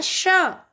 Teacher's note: जब हम इसका उच्चारण करते हैं तब हमारी जो जीभ है वो तालु को छूती है, तालु ऊपर की तरफ, इसलिए उसको वो हो गया श, तालव्य श।